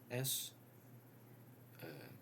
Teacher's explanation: S is a voiceless consonant because if I pronounce S, there's no vibration here.